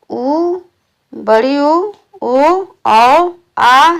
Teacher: उ, बड़ी उ, ओ, औ, आ ये पश्च स्वर हैं। इन स्वरों का उच्चारण जिह्वा के पिछले हिस्सों से होता है।